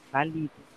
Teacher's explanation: Se é valido, ela é na penúltima, ela é uma paroxítona.